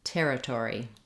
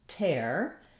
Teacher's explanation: territory has the stress on the first syllable, ter, and letters ER say the air diphthong